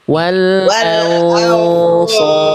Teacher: nun sukunnya udah disamarkan karena ketemu huruf shad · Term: Ikhfa hakiki